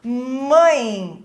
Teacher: da som nasal né então por que que ele é decrescente porque ele começa forte aqui na vogal a e ele é enfraquece na semivogal e aqui o e tem papel de semivogal porque tem sombi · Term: ditongo decrescente